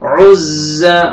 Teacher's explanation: आइन पढ़ना है और जा के साथ मिलाना है, जा को जोर से पढ़ेंगे